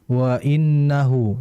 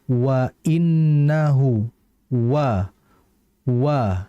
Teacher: Jadi ketika fathah pun ia tetap harus dibaca monyong karena memang itu makhrajnya